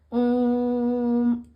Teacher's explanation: ओम, इस तरीके से बोलते हैं ना, खूब लंबा ओ को खींचते हैं ना, तो वो हो गया प्लुत। प्लुत स्वर हो गया जिसमें 3 मात्रा का समय लगता है।